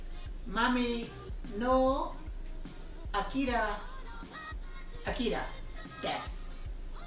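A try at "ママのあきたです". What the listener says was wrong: There you go.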